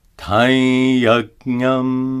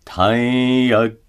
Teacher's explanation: Notice that the anuswara is pronounced as a nasalized ya.